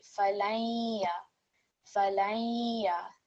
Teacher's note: We have also here partial assimilation. So we hear a light nasal sound when we merge the noon sakin with the ya mushaddad